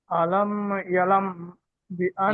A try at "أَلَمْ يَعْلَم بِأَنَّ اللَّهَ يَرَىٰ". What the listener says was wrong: ইয়ালাম হবে না, ইয়া আইন জবর ইয়া, ইয়াটি আইনের সাথে যুক্ত করবেন।